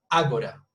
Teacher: it's 3 syllables and the stress is at the beginning